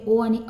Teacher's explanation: कंठोष्ट वर्णमध्ये ओ आणि औ येणार आहेत आणि स्पर्श भाग आहे कंठ्या आणि ओष